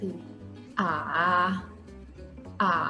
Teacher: จะเป็นเสียง3ลงแล้วก็สูงขึ้น